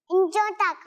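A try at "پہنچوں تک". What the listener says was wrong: इंचों तक, पहुंचो तक, ठीक है, पहुंचो। अब वो बच्चों को सुनने में थोड़ा हो जाता है मसला, इंचो नहीं है बल्कि क्या है, पहुंचो तक।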